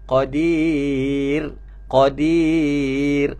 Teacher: Okey, ra nipis. Kalau berhenti pada huruf ra yang sebelumnya bawah dibaca dengan nipis.